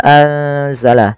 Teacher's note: dibaca dengan bacaan ikhfa nunnya disamarkan ke huruf zai